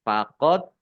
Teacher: dal sukun, bacaan qalqalah, dibaca memantul, ditampakkan pantulannya